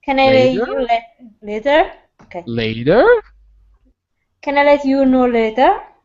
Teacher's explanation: it's got to go up at the end it's a question